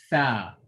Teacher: So this tongue is touching the bottom of the front teeth, the bottom of the upper front teeth. It's underneath it.